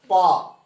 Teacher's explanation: देखिए दोनों ओठ आपका टच करेगा